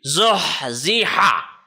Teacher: The sound of ha comes from the center of your throat where you can feel your jugular vein. That is the place from which the sound of ha is produced, and it should be sharper, sharp as a knife.